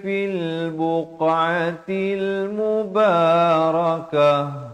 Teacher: Kalau waqaf di sini ta marbutah dia jadi ha. Tukarkan kepada bunyi ha dan diberikan tanda mati mendatang.